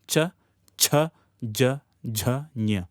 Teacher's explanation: All these from the tongue and the palate meeting.